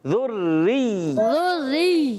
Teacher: ذری، ذری، ذری، را پر بھی تشدید، یا پر بھی تشدید، را اور یا دونوں مشدد رکھیں گے، ذرا رک کر پڑھیں گے